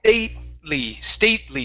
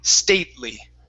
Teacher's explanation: we're going to fake like we're going to say the T, and then we go, nah, and we just go right to the L.